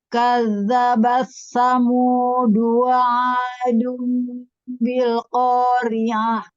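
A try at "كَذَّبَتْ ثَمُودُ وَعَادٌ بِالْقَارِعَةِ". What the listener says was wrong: Di sini ada tak yang sukun. Kadza. Nah, di zalnya juga ada tasydid ya. Kadzabat, kadzabat. Kasih hamas pada ta sukunnya tapi ringan saja.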